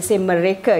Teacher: I don't have that trill. And in Peninsular Malaysia, generally in Malay as well, we don't have the trill